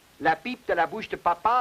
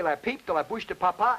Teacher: The Frenchman's P and our P are not the same sounds, even though we use the same letter of the alphabet to represent them. The Frenchman's P, for instance, initially, as I showed you in the last program, is not aspirated. In other words, when he says, la pipe de la bouche de papa, there is no air.